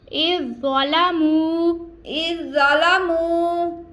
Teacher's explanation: زو پر پڑھا جا رہا ہے ہم نے باریک زال کو نہیں پڑھنا زو جو حروف مستعلیہ ہے جس کو ہم پور پڑھ رہے ہیں